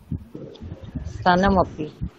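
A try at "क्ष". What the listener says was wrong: না, স নয়, ক্ষ, উচ্চারণ করলে যেমনটা হয়, একবার ক স ক স ক স ক খ ক স দুটো আলাদা করে বলুন বারবার, ক স ক স ক স এবং মূর্ধন্য স আলাদা করে করে বারবার বলে তারপরে চেষ্টা করলে একসাথে বলে।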